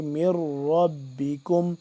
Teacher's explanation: یہ را مشدد ہے، اس کو دو دفعہ را پڑھے گا، یعنی کہ میم را زیر مر، را با زبر رب، با زیر بی، را کو بھی پر کر کے پڑھیں گے۔